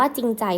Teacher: เขาไม่ออกเสียงรอเรือเลยนะคะ